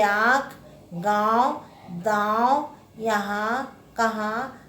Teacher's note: अनुनासिक यह नासिक के वर्ण है। इसका उच्चारण नाक और गले से होता है।